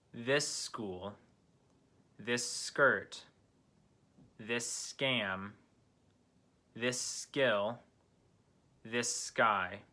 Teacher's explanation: the S from this blends in with the S in front of the consonant K